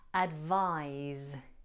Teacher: Advise is the verb and is pronounced with a z sound instead of a s sound. Advise.